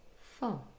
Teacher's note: we would hear it and pronounce it in its weak form for, containing a schwa.